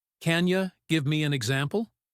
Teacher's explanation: In natural speech, can you becomes can ya.